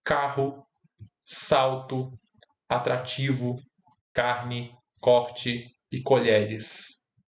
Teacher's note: As vogais E e O se realizam como I e U frouxos em núcleo de última sílaba átona